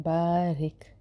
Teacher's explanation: را باریک ہوگا کیونکہ زیر ہے، کسرہ ہے